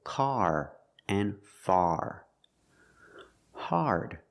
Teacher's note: the word is pronounced hard it's an open Sound ah a r connected to the r like when you say car